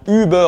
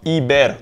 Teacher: Le son U, qu'il soit court ou long, équivaudra au yiddish à un I.